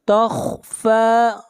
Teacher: تخفى، خا کو موٹا پڑھیں گے، خا حروف مستعلیہ میں سے ہے، اور فا کو کھینچ کر پڑھیں گے ایک الف کے برابر، فا کے اوپر کھڑی زبر ہے